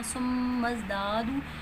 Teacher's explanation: میم مشدد ہے، غنہ کریں گے، ناک میں آواز لے کے جائیں گے ، زا میں سیٹی کی ساؤنڈ ہے تو سیٹی کی ساؤنڈ